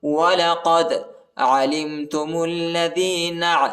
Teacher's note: میم کو لام کے ساتھ ملائیں گے، لام کے اوپر شد آیا ہے، الف نہیں پڑھا جاتا، الف کے اوپر حرکت نہیں ہے.